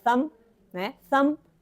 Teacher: é só vento não tem Vibration